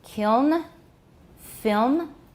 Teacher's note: The nasals in kiln, film, are not syllabic in most accents of English.